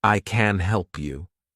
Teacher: if I want to say I can help you meaning that I'm able to help you then I'm emphasizing the word help